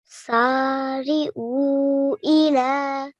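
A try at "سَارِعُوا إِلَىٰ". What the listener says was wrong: The O a tiny bit longer, okay? Try to make the O tiny bit longer. Try again.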